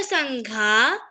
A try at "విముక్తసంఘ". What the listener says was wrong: ఘా అని చెప్పానా నేను? ఒత్తి పలికానా?